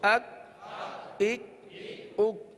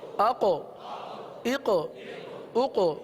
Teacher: کاف کو ہم نے باریک بھی پڑھا، قلقلہ نہیں کیا. قوف کو پر بھی پڑھا اور اس میں قلقلہ بھی ادا ہوا ہے، لہٰذا ان دونوں میں بھی فرق رکھنا ہے.